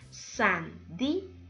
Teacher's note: Según la regla, no podríamos tildarla, pero acá encontramos un hiato. Observe, dos vocales juntas, pero la tilde recae en la vocal cerrada y eso hace que se divida esta unión